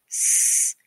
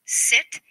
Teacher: The s is a voiceless fricative consonant.